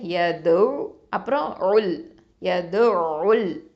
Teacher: அப்போது இந்த 2 எழுத்தையுமே நம்ம உச்சரிக்கணும். நிறையா பேர் பண்ணக்கூடிய மிஸ்டேக்கு ஐன் சுக்கூனை வந்து விட்டுருவாங்க